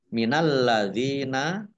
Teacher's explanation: lamnya dibaca dobel ada tasdiknya